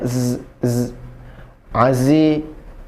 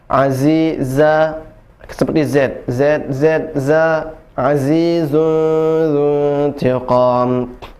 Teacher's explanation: huruf zai itu dia memiliki desis ya, ada desisnya azi ya. Kemudian dia tidak mengalir nafasnya.